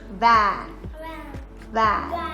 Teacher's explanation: So your upper teeth will touch the lower lips and say van.